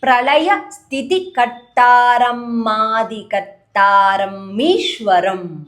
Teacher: Instead of Ishwara, it will become Mishwara when you combine.